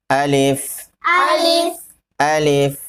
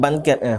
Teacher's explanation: الف کا مخرج ہے منہ کے اندر کا خالی حصہ، جوف دہن کہتے ہیں